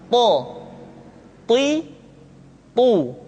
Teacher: th diucapkan dengan menyentuhkan ujung lidah dengan gusi-gusi dua gigi seri bagian atas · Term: huruf tho, huruf to